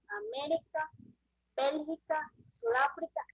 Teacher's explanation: Son las que llevan intensidad de la voz en la antepenúltima sílaba. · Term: palabras estrújulas